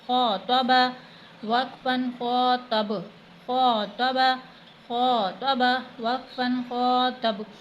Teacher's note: خو حروف حلقی میں سے ہے، حلق سے ادا ہوگا، تو کو موٹا پڑھا جائے گا · حلق سے ادا ہوگا، تو کو موٹا پڑھا جائے گا، اور با حروف قلقلہ میں سے ہے، اس لیے وقت میں اس پر قلقلہ ہوگا